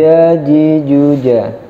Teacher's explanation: Hurufnya dari tengah-tengah lidah, bukan dari ujung lidah. Karena makharijul huruf jim itu di tengah-tengah lidah, maka pengucapannya harus dari tengah lidah.